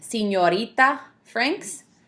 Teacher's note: You have the N and then you have the Y sound right after it.